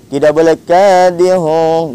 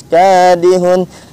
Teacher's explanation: Jadi kalau pemirsa baca Al-Qur'an ada tanwin, baik itu domah tain, kasrah tain ataupun fathah tain bertemu dengan huruf alif ataupun hamzah, maka hukum bacanya yaitu izhar halqi. Tidak boleh didengungkan, tidak boleh disamarkan bunyinya, harus dijelaskan.